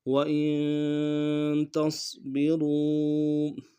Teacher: وَإِن میں حمزہ کو نون ساکن کے ساتھ ملانا ہے، نون ساکن میں غنہ کریں گے